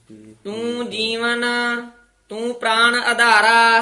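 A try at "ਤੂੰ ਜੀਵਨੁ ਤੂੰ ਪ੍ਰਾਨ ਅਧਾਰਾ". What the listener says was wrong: ਹੁਣ ਤੂੰ ਜੀ ਤੇ ਵੀ ਬਿੰਦੀ ਲਾ ਦਿੱਤੀ ਹੈ। ਜੀਵਨ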